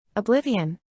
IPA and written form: əˈblɪv.i.ən (Oblivion)